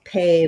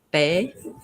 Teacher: a tiny bit of air come out when I say pay you can hear there's a burst of air that comes out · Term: aspirated stop consonants